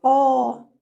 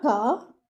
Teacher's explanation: So both the letters should be given 2 counts. Okay, but your qaf should be heavy and your lam should be light. Okay, it should be qa, not ka.